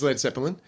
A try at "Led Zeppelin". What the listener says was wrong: There's no letter between the P and the L. Not Zeppelin.